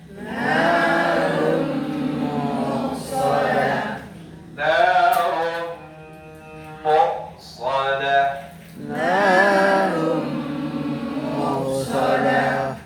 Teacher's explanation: Udah gak kedengaran lagi tuh bunyi nunnya atau tanwinnya kalau ketemu mim. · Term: idgham bi gunnah kamil